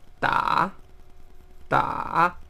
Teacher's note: este es un tono que baja primero y después vuelve a subir entonces este sería taha ah y finalmente este es un tono · Este es uno de los más complicados para la gente que está aprendiendo chino y la mejor manera de practicarlo es decirlo lento, porque este es un tono que baja primero y después vuelve a subir